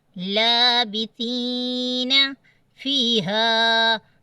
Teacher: ہا کی آواز دیکھیں کہاں سے آ رہی ہے، سینے سے